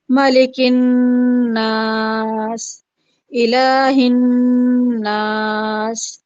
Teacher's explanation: نون آ رہا ہے اور مشدد آ رہا ہے، تو ملک الناس میں غنہ کر رہے ہیں، جی اور الہ الناس میں بھی سیم اسی طریقے سے ہے کہ غنہ کیا جائے گا، نون پر تشدید ہو۔